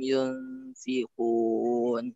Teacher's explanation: Yunfikun kalau bisa dia dibaca dengan ikhfa ya, lebih samar, jangan terkena makhrajnya.